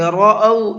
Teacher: را کو منہ بھر کے پڑھیں گے